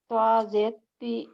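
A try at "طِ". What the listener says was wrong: توا کا مخرج تا سے الگ رہنا. تا اور توا میں فرق رہنا. توا زبر توا. توا زیر توی. توا پیش تو.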